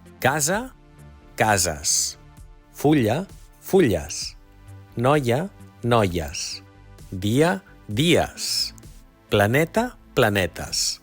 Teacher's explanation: Fixa't que, malgrat el canvi de vocal, d'una a una e, la pronunciació és la mateixa. És el so de la vocal neutra